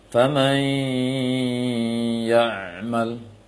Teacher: Maka bunyi dengungnya naqis atau gabungnya dengan naqis. Secara ringkas itu idgham, menggabungkan bunyi nun sukun ke dalam ya dengan tidak sempurna. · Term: idgham naqis